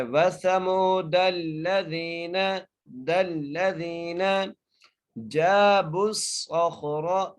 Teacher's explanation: کیونکہ صاد کے اوپر زبر ہے اور تشدید ہے، اس لیے تشدید آنے کی وجہ سے ہم صاد سے ملائیں گے اور صاد کو موٹا کر کے پڑھیں گے